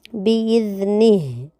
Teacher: باذنہ میں ذال کی جگہ زا پڑھنے سے بچنا ہے، آخری میں ہا کو واضح کرنا ہے۔